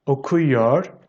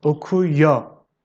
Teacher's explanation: speech we just drop the red then and it becomes yo most of the time we don't pronounce the re at the end